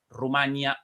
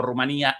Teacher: La pronunciación Rumanía, a la que es mayoritaria en España y coincide con la pronunciación de este topónimo en la lengua rumana, pero en amplias zonas de América es más frecuente la pronunciación con diptongo, a la que corresponde la grafía sin tilde Rumania.